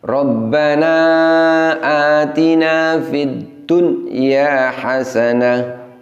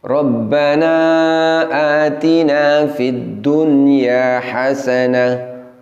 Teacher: wa qina Adza Bannar tune ia ketika kita membunyikan demikian berarti terjadi jeda antara bunyi nun sukun dengan yak setelahnya yang benar adalah harus sambung bunyinya seperti ini Rabbana Atina Fiddunya